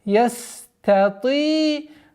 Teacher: Обратите внимание на полноценность произношения свойства свист у буквы син